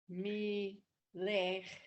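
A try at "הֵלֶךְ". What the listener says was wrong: No, that's not a me. That's not a mem.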